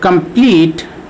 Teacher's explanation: pronounced syllable is known as accented or stressed syllable for example in the word complete we have two syllables and the second syllable is more stressed than the first syllable